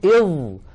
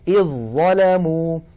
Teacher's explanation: ومن تلك الأمثلة قوله تعالى إذ ظلموا، لاحظوا بأني أقول إذ، يعني ما عاد هناك في النطق ذال يا إخوة، على طول مباشرة إلى الظاء